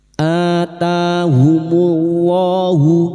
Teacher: bertemunya hamzah dengan mad alif kecil di atas mad badal dua harakat kita panjangkan